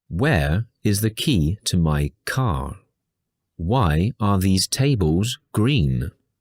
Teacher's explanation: usually the intonation of the wh question is falling on the most important syllable